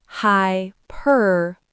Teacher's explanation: It has four syllables, not two, and the stress is on the second syllable.